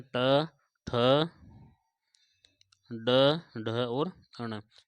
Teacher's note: मूर्धन्य, मूर्धन्य होंगे आपके ट, ठ, ड, ढ और अण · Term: मूर्धन्य व्यंजन